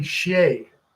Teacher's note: They say she with a hard ch sound.